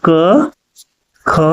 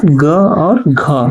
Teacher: क और ख जो दोनों आया ये आपका हो गया अघोष वर्ण।